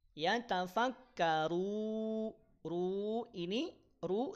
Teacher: saat memanjangkan huruf rnya jangan dulu didengungkan ya jangan dulu didengungkan kapan dia dengungkan itu setelah dipanjangkan dua atau empat atau en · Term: Mad Arid lukun